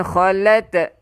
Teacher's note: Khalat keluarkan angin. Kita panggil dia hamas, keluarkan angin.